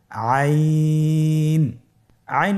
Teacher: আর হরফটি কন্ঠনালীর মধ্যখান থেকে উচ্চারিত হয়